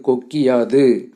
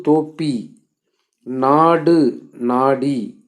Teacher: சொற்களைத் தொடர்ந்து யகரத்தை முதல் எழுத்தாக கொண்ட சொற்கள் வரும்பொழுது குற்றிய லுகரத்தில் உள்ள உகரம் இகரமாக மாறும் அந்த இகரம் தனக்குரிய ஒரு மாத்திரை அளவிலிருந்து அரை மாத்திரை அளவாக குறைந்து ஒலிக்கும்